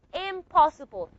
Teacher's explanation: The alveolar nasal became a bilabial nasal, just like the bilabial pa. So you pronounce it now as impossible.